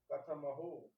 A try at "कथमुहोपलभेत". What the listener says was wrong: मुहो के महो है, कथम उहो हाँ तस्य पश्यतु किमस्ति, मुहो किमस्ति, कथमुहो पलभेत बीजम किम